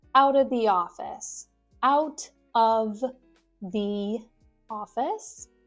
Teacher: Squish out of together to make outa.